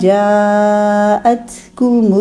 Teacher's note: کو مل میں 2 رولنگ کرنی ہے. کاف کے لیے پہلے ایک رولنگ، ایک دفعہ ہونٹوں کو گول کیا. میم کے لیے دونوں ہونٹ بند کیے، میم ادا کریں، پھر میم کی پیش کے لیے دوبارہ ہونٹ گول، 2 رولنگ ہو جائے گی. · جاءت یہاں پہ مد پہلے بنائیے، پھر تا میں ہمس کیجیے